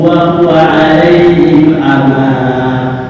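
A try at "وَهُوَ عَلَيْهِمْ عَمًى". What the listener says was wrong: Kepanjangan amanya hanya 2 harakat. Ama titik. Bukan ama, itu kepanjangan masih.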